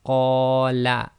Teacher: So that's 2 long on the qa, and la is 1 long